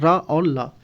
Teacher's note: दंत मूल में रा और ला आते हैं